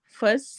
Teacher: فس سین میں سٹی والی آواز